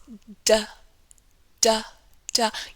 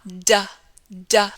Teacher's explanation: usually, to produce this sound, the d sound, we tap against the alveolar ridge. The alveolar ridge is that area behind your top front teeth. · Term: alveolar d sound